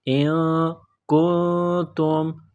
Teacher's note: نون ساکن ہے، نون ساکن کے بعد کاف ہے، حروف اخفا ہے، غنہ کریں گے ، ان کنتم، کاف کو باریک کرنا ہے، نون کے ساتھ · کاف کو باریک کرنا ہے، نون کے ساتھ پلس کرنا ہے، نون ساکن پر غنہ کریں گے